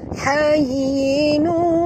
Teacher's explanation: Tanwin baris dua di hadapan bertemu dengan waw, maka kita kena masukkan sepenuhnya bunyi tanwin ini masuk ke dalam waw disertai dengung dua harakat idgham ma'al gunnah.